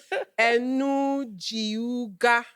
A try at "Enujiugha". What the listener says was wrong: No, Enujiugha. The G is silent.